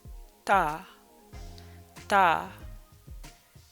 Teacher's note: makes a soft d sound so written with ah it's ta you really want that tip of the tongue soft d sound